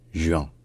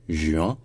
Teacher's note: avec la semi-voyelle au milieu, qui est un UE et non pas un OUE. C'est un UE, un peu comme un U.